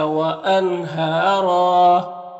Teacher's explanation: نون میں اظہار حقیقی ہوگا، نون کو ظاہر کر کے جلد پڑھیں گے۔